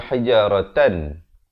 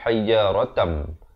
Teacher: Hijaratam, di sini didengungkan 2 harakat, masuk beserta dengung. Asalnya hijaratan, tapi bila tanwin bertemu mim, jadi kita masuk terus ke dalam mim, jadi hijaratam. Tapi jangan lupa dengungkan 2 harakat.